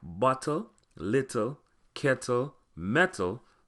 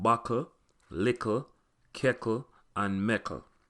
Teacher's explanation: the ending TTLE in Patwa is KKLE, so words like bottle, little, kettle, metal become buckle, lickle, keckle, and meckle.